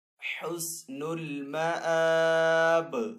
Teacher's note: जब हम बा को साकिन करेंगे तो बा हरूफ कलकला में से है तो वफ़ की सूरत में बा के ऊपर कलकला करेंगे।